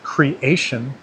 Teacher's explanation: in a word like creation, the emphasized syllable is ash